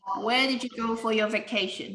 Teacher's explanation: In this case, the question has a falling tone. Where did you go for your vacation? The speaker doesn't know the answer at all.